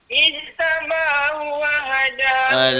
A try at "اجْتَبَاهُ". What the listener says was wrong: Lantun sikit huruf jim dia sebut. Ijtaba qalqalah. Ijtaba.